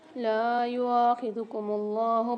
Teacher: اللہ کے لام کو موٹا پڑھیں گے۔